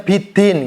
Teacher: Biasanya kalau ada orang Jawa atau orang Jogja ya, itu biasanya biddin gitu kan. Jadi ada nafasnya.